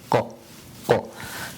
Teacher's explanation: the qaf again, which is right from the back of the tongue, going up